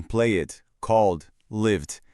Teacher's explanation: temos o som de D, que é um som sonoro, ou seja, ele vibra as cordas vocais